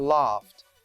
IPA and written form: lɑːft (laughed)